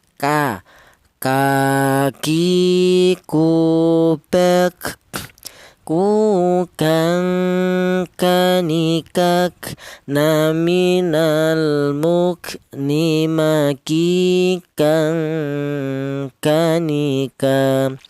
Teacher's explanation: keluarnya huruf berasal dari pangkal lidah. Pangkal lidah itu lidah bagian belakang ya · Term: huruf kaf